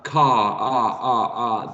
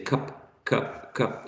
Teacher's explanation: Car, the tongue is at the bottom, right, of the mouth, and when you say cup, cup, cup, is not really at the bottom, but in a more middle position